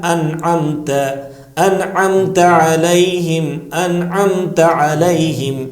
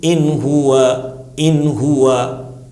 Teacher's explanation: فوراً اس نون کو ہم ظاہر کریں گے، نہ کھینچنا ہے وہاں پر اور نہ جو ہے اسے چھپانا ہے، اس آواز کو ظاہر. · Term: اظہار